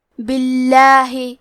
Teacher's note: کلمت باللہ کیونکہ حرف البا کے نیچے زیر ہے تو ہمیں لفظ الجلالہ مطلب کلمت اللہ کے لام کو پتلی آواز میں پڑھنا ہے